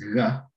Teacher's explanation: It's a voiced velar fricative